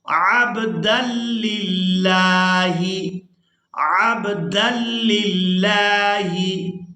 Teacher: दाल को लाम मुशद्दद के साथ मिलाएंगे, फिर लाम को लफ्ज़ अल्लाह के लाम के साथ मिलाएंगे। दाल लाम दो ज़बर दल, लाम लाम ज़ेर लिल लाम खड़ी ज़बर ला।